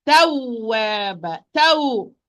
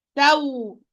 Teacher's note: I'm going to give a push of the sound when I am pronouncing the waw with shadda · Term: nabr or stress